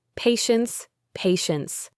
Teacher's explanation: It makes a sh sound, patience, patience. The T at the end is very soft, almost silent.